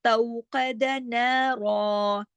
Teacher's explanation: रा को हमने मोटा भी किया जबर की वजह से और दो जबर है, यहाँ दो जबर की तनवीन है, लिहाजा دو زبر کی تنوین جب رکتے ہیں، جب عارضی سکون کرتے ہیں تو ایک زبر پڑھی جاتی ہے اور ایک الف کے برابر اسے کھینچا جاتا ہے.